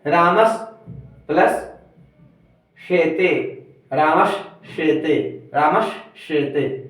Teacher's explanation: दंत स के बाद तालव्य स या चवर्ग रहे तो स का श हो जाता है